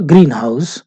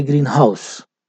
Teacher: the stress falls on green which is the first component